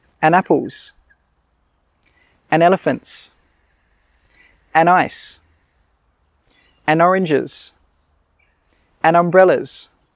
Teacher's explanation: So you can see here, we don't say and then the word, we just say an. We don't say that D sound.